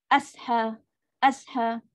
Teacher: Sod ada sukun, dia ada angin yang lepas. Lepaskan angin dulu, sofir. Pangkal lidah naik. Kalau kita tak naik pangkal lidah, dia akan jadi huruf sin lah. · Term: huruf sod